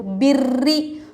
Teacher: تشدید والی را ہے، اس کے نیچے زیر ہے، ہم کیا کریں گے؟ رائے مشددہ کو باریک کر کے پڑھیں گے